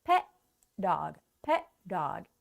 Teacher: But what happens with the T and the D? They kind of like absorb into each other and combined into pet dog.